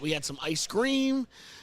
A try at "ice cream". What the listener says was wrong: Ice cream. No, you're emphasizing the cream. Ice cream. You're emphasizing the cream. Ice cream.